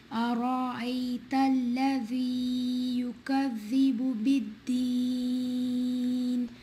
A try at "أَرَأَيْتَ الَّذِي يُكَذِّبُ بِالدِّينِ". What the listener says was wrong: So most of the mistakes in بت, it's not like بد, دد. بالدين. A is not like A. A is lighter. Hamza فتحة A. أرأيت الذي يكذب بالدين. الذي in ayah 1 and 2 longer than 2. So make it shorter little. This is longer than 2 counts.